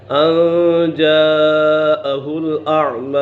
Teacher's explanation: حرف مدہ کے بعد حمزہ اسی کلمے میں ہے تو اسی وجہ سے مد متصل ہوگا